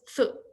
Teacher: the first sound is th, and our vocal folds are not vibrating